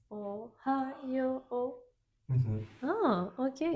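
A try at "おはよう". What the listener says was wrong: Yo should have two morals. It's not Ohayo. It's Ohayo. Sometimes in alphabet, this is not written. So many people, if you just read alphabet, you may pronounce it as Ohayo. But that doesn't sound natural. It should be Ohayo.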